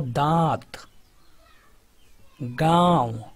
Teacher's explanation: अनुनासिक में जो उच्चारण होता है मुख के साथ नाक से भी होता है